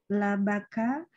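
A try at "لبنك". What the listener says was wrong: Labanu, nunya mana?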